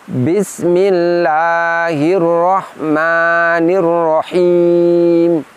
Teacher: pada lafadz rahim disitu terdengar seperti ada tekanan keluar tidak lembut Apa sebab karena tadi saya mengucapkan rahimnya dengan mengangkat dan menekan